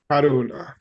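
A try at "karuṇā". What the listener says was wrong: Karuna. With a retroflex N. Karuna. Yeah, Karuna.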